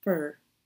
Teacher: not a big strong o sound in the word for but short and weak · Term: lazy vowel sound